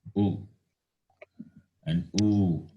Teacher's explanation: These are pronounced by rounding the lips, therefore labial.